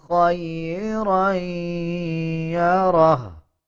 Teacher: غننے کی آواز کو ناک سے نکالا جاتا ہے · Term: غنہ